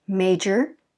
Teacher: first stress is on the first syllable major we fall in our voice i don't if you notice